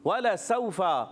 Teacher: واو کی ادائیگی ہونٹوں کی گولائی سے